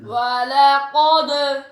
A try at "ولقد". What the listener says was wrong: दाल बारीक पढ़नी है, कौफ आपने सही मोटा पढ़ा।